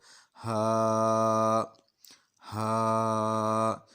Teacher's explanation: हा हरूफ हल्की है, सीने की तरफ से अदा हो जाएगा